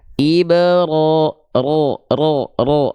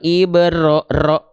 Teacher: jadi getarannya tidak boleh banyak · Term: takrir